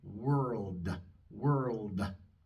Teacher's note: vamos a pronunciar una pequeña A después de la D.